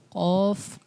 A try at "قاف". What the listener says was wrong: قوف میں ہونٹ گول نہیں, بال بچے پڑھتے ہیں قوف. قوف نہیں پڑھنا, کیا پڑھنا ہے؟